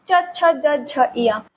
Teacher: देखो ये आप जब बोल रहे हो ना तो आपको बोल के पता चलेगा आपका जो जबान है वो आगे की तरफ और पूरा का पूरा आपके तलवे पे टच हो रहा है। जो आपका आपके मुंह का ऊपर का हिस्सा है उसमें टच हो रहा है। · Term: तालब